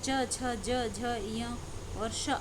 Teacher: इन्हें हम तालव्य व्यंजन के नाम से जानते हैं, यानी है ये तालु से उच्चरित हो रहे हैं